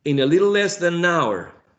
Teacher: hour is the most prominent syllable